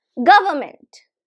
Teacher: We are stressing the first syllable, that is G.